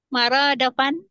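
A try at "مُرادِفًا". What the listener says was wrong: Bukan marah. Jangan dibaca marah.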